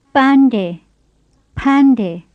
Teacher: The first of them begins with a plain P, and the second with an aspirated P.